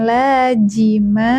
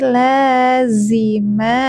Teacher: Ini zaman satu makhraj dengan huruf sa dan so. Lazi bukan laji, karena huruf za ini sering dibacanya ja.